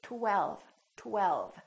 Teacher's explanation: And then the tongue goes up again for the L, l, l. And then the lower lip touches the upper teeth for the V